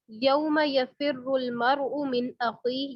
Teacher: یفر را موٹا پڑا جائے گا کیونکہ را شد اوپر ضمہ ہے، را شد اوپر ضمہ ہے، اس وجہ سے موٹا پڑا جائے گا.